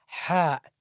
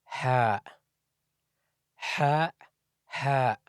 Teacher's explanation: Ha is actually the first of the six guttural letters because when you say ha, you should feel the vibration in the middle part of the throat